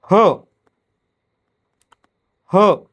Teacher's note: ह या वर्णाचा उच्चार करताना फुफ्फुसातील हवा तोंडावाटे जोरानं बाहेर फेकली जाते, म्हणून त्याला महाप्राण असं म्हटलं जातं.